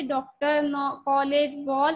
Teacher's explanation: आ ओ ध्वनियों के मध्यवर्ती दीर्घ स्वर ओ का उच्चारण होता है